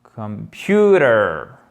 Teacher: on a le O qui est prononcé comme un schwa, c'est-à-dire un E atténué